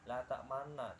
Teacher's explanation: namanya ismam, yaitu membacanya itu rada mencucu